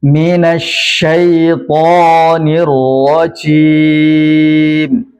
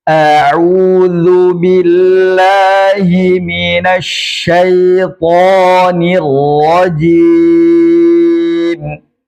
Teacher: Minasyaitanirrajim. Nah, dihindari untuk memberikan desis atau saofir pada huruf jim karena dia tidak memiliki saofir. Bahkan dia tidak hanya saofir yang tidak dimiliki, bahkan hames pun dia tidak punya hembusan nafas ketika membacanya pun tidak punya.